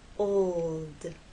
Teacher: But to get that L sound, you must keep it pressed against that bump, and there should be vibration the whole time, from the O to the L and finally into the D